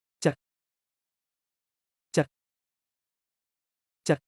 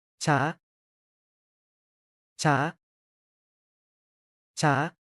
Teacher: Low tone, going down. Imagine you're disappointed, that's your low tone.